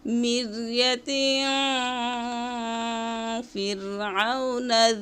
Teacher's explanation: দুই জের থেকে এক জের বাদ দিবেন আর এক জের দিয়ে গুন্না করবেন। নাকের বাঁশির ভিতরে গুন্নার আওয়াজ জারি করবেন আর উপরের দাঁত নিচের ঠোঁটের সাথে মিলাই রাখবেন।